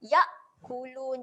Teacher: matikan bunyi hamzah dekat pangkal kerongkong, bukan di tengah